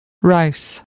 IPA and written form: raɪs (rice)